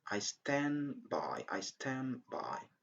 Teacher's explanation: We drop the sound d at the end.